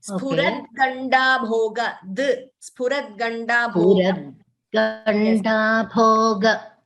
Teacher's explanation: And the first line, yes, first line, it is not spuran. It is spurad ganda bhoga. You chanted spuran ganda bhoga. There is no n there.